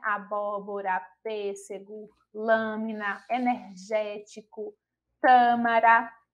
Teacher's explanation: palavras que tem a localização da sílaba tônica na antepenúltima sílaba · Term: proparoxítonas